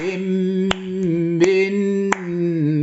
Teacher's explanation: الغنن يجب ان تمنحها زمنين ايقاعيين